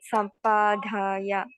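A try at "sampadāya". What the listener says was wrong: you made an additional aspect, not sampadaya. There's no H over there. Sampadaya.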